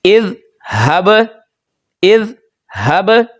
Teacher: جو با ہے اس پر ہم پڑھنے کے دوران آواز لوٹا کر پڑھیں گے